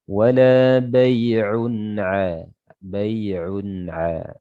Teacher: Nah, tapi kalau kita lanjut wala bai'un an dzikrillah. Di sini tanwin bertemu dengan ain izhar. Ya, jelas tanwinnya, jelas suara nunnya.